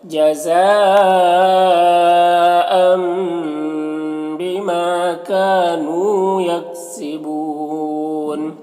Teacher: یکسبون یہاں پر وقفی کی صورت میں مد عارض وقفی ہوگا